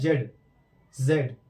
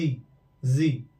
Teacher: जब नुक्ता लगा देते हैं तो हल्का सा वाइब्रेशन आता है, बोलते समय हमें वाइब्रेशन फील होता है